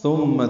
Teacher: ثم تھا نرمی سے ادا ہوگا، میم مشدد پہ غنہ ہے